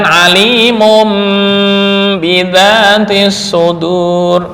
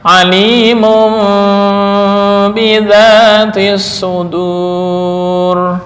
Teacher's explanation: Yang tepat menurut jumhur ulama tajwid adalah remang-remang setelah mengganti dengan mim.